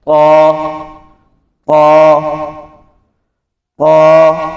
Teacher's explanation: قا، قا ناک میں پڑھا جاتا ہے، تو ناک میں نہیں پڑھنا بلکہ منہ میں پڑھنا ہے اور اس کی آواز جو ہے وہ بھی حلق کے قریب سے آئے گی